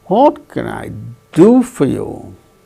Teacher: Do gains that change in pitch, falling tone.